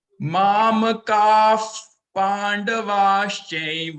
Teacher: इसमें विसर्ग को फ बोलना है, फ